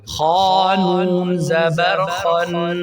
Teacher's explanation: آگے خا ہے اور خا حروف مستعلیہ میں سے اس کو موٹا پڑھنا ہے، اور آگے خان اور نون کے اوپر شد ہے تو خا نون کے ساتھ ملے گا، خانون زبر خن۔